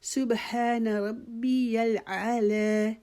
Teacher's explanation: لا کو بھی ہم نے ایک الف کے جتنا لمبا کھینچنا ہے